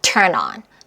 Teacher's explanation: n이랑 뒤에 나오는 모음이 탁 하고 붙어요. 연음이 돼서 turn on.